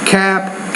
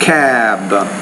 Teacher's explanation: When the B's at the end, the vowel sound will be longer.